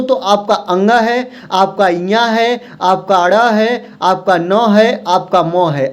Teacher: जो नासिक के व्यंजन होते हैं, इसके उच्चारण में जो हवा होती है ना, वह मुख से तो निकलती है, साथ साथ में नाक से निकलती है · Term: नासिक व्यंजन